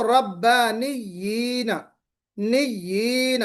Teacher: हम दोनों या को मर्ज कर रहे हैं, दोनों या को हम मर्ज करके पढ़ रहे हैं